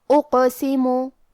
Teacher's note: قاف کی ادائیگی زبان کے جڑ اور تالو کے نرم حصے سے ہے. کیونکہ قاف حروف تفخیم میں سے ہے تو ہم یہ حرف کو موٹی آواز میں پڑھیں گے. · کیونکہ قاف حروف تفخیم میں سے ہے تو ہم یہ حرف کو موٹی آواز میں پڑھیں گے. حرف القاف پہ جزم ہے لہذا ہمیں یہ حرف کو قلقلہ سے پڑھنا ہے اور قلقلہ کا معنی ہے حرف ساکن کو ہلانا.